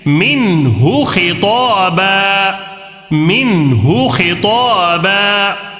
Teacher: نون کو ظاہر کر کے بغیر غنہ کے جلدی پڑھیں گے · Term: اظہار